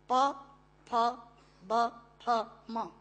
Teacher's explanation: प फ ब फ म दोनों होंठ मिलाकर बोले जा सकते हैं। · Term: पवर्ग